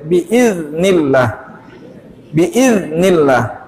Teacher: huruf zal keluar dari ujung lidah dengan ujung gigi seri atas kita. Kalau dia tidak ada suara yang terseret menjadi biiznillah, tapi dia harus ada suara terseret sedikit.